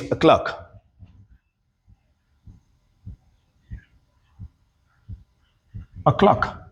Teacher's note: So, it became a schwa sound because it's in a weakened position.